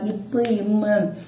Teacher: மேலிதழும் கீழதழும் பொருந்துவதால் இப்பு, இம்மு. ஓகேங்களா? அது 2 வாய் நம்ம மேலிதழும் கீழதழும் 2 டச் பண்றதுனால உருவாகும்.